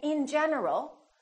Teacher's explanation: my tongue moved three times in general three times touching the top of my mouth